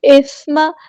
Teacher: سا کو نرمی سے ادا کرنا ہے، میم کے زبر کو لمبا نہیں کرنا